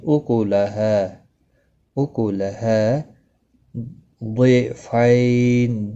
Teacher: یا لین ہے، تھوڑا نرمی کے ساتھ کھینچ کر ادا کریں گے